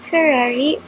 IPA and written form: fəˈrɑːri (Ferrari)